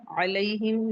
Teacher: या लीन है, नरमी से पढ़ेंगे